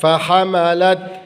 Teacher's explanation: فحملت کی لام کو تا ساکن سے ملائیں گے